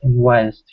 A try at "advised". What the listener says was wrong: Advised, that was a little tricky. We need to work on that V sound. Advised.